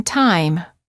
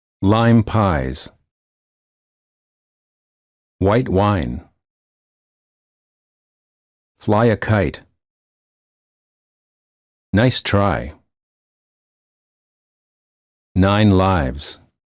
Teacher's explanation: and they close a bit when moving to the it position the tongue is relaxed and it moves from a flat to high position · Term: i sound